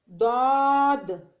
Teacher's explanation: داد زبان کی کروٹ اور اوپر کے 5 داڑوں کے ساتھ ادا کیا جاتا ہے